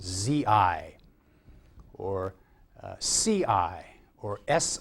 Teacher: This is the vocalized extension of the dental sibilent row of initials